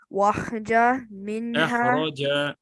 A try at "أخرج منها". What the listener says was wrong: مش و. There's no what. أخرج منها.